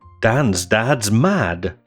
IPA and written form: ˈdænz ˈdædz mæd (Dan’s dad’s mad)